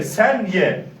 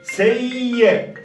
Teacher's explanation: Yani bir elif miktarı tutuyoruz